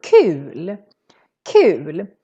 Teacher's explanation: the u is real long because we're just one consonant coming after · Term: long u